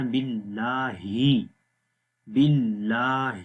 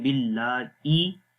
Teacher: جائے گی، جہاں سے حمزہ کو ہم نے پڑھا تھا باللہ، تو یہاں پر ہی کی ہی آواز آنی چاہیے، ای نہیں پڑھنا آپ نے، جیسے کہ ای میں حمزہ کی آواز آ جاتی ہے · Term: ہا کی آواز